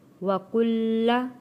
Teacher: لام کے اوپر تشدید ہے، تھوڑا سختی کے ساتھ لام کو ادا کریں گے